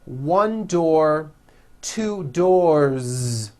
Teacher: 1 door, 2 doors, with a voiced Z ending